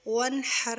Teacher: یہاں غنہ نہیں کریں گے، اظہار ہوگا، کیونکہ نون ساکن کے بعد یہاں پہ ہا آ رہی ہے۔